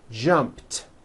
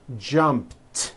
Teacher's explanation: The final sound in jump is a P, which is unvoiced. So when you put it in the past tense, all you do is add a T. So jump becomes jumped with a T sound at the end.